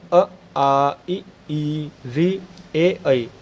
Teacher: इनको बोलने पर आपके होठों की स्थिति जो है गोल नहीं हो रही होगी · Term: अव्रतमुखी